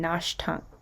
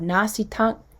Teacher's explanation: the part that means I shape shifts from a sh to an E or an E to a sh depending on whether or not that perfective morpheme is before it.